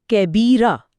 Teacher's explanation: जी, तो इस सूरत में वक्फ करते वक्त उन 2 ज़बर को एक अलिफ में मद्दा से बदल दिया जाता है, यानी आवाज़ को थोड़ा खींचा जाता है। मिसाल के तौर पर कबीरन पर रुकेंगे तो इसे कैबीरा पढ़ा जाएगा, रा के बाद एक अलिफ की आवाज़ के साथ।